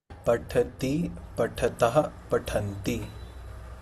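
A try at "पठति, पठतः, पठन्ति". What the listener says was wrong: Yeah, a little bit, but ta should have air in that, okay? Pathati, pathatah, pathanti.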